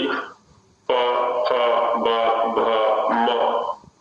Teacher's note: तो ऊ में तो क्या होता है, दोनों ही ओष्ठ गोलाकार बन जाते हैं ऊ, जबकि प फ ब भ म इनमें नीचे वाला ओष्ठ ऊपर वाले ओष्ठ का जाके स्पर्श कर लेता है सीधा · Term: ओष्ठ्य वर्ण